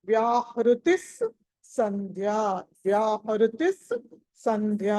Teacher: తి తర్వాత స తెచ్చుకోవాలి